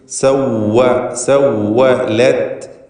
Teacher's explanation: വാവ് പൂർണ്ണമായും രണ്ട് ചുണ്ടുകളിൽ നിന്ന് തന്നെ ഉച്ചരിക്കണം. താഴെ ചുണ്ടും മേലെ പല്ലും ചേർത്ത് സവ്വ എന്ന് മലയാളത്തിൽ വാ പറയരുത്.